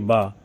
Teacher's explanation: यह ओष्ठ वर्ण है। यह अल्पप्राण है। यह स्पर्श वर्ण है। और यह घोष वर्ण है।